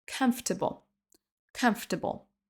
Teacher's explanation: comme si le OR n'existait pas